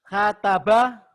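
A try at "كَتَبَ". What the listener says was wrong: kataba. Nggak ada yang ditekan Pak. Nggak ada yang ditekan karena pendek. Kataba. Tuh, beda ya.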